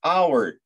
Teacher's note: Farqi shundaki, unli undosh tovush bilan boshlanadigan so'zlar bor, lekin ular birinchi harfi talaffuz qilinmaydi. Masalan, h, ha tovushi talaffuz qilinmaydi. Ya'ni hour, soat, bir soat, an hour so'zi h yoki ha talaffuz qilinmaydi va shuning uchun n a hour deyilmaydi-da, an hour deyilishi kerak.